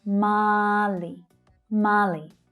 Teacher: So that long /ɑ:/ vowel sound is the stressed sound.